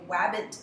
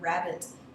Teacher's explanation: we see young children often make a WR substitution where the W is easier to pronounce than the R